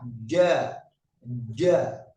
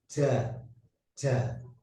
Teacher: Yang pertama huruf jim. Jim ini tengah-tengah lidah nempel, ya, nempel langit-langit atas.